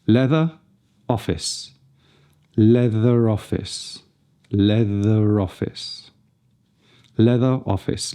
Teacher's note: Here we have the possibility of a linking R, as the final R in the spelling of leather leads into the first vowel of office. This is something that General American does strongly as standard, but we can use it in British received pronunciation.